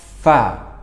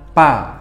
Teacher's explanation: Nah, ini banyak orang yang masih menyebut huruf fa dengan pa. Nah, huruf fa ini kita harus mengalirkan udara dalam mulut kita keluar. Fa melewati antara gigi dan bibir.